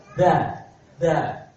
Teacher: ujung lidahnya nempel di ujung gigi seri atas